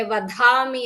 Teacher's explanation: ಅಲ್ಪಪ್ರಾಣ ಇರೋ ಕಡೆ ಕೆಲವೊಂದು ಕಡೆ ಮಹಾಪ್ರಾಣಗಳು ಬರ್ತಾ ಇದೆ